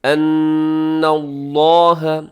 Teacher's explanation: یہاں نون مشدد ہے، اب یہاں غنہ کیجیے گا اور لفظ اللہ کو آپ موٹا پڑھیے گا